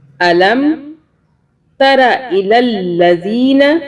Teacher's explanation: لام کی 2 مرتبہ آواز ہے، ایک لام پچھلے لام سے ملے گا، دوسرا لام جو ہے ایک لام کی جو آواز چھپی ہوئی ہے اور دوسرے لام کے اوپر زبر کے ساتھ۔